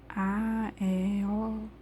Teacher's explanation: esses fonemas são sem nenhuma interrupção a saída de ar ao dizer esses fonemas é muito fluida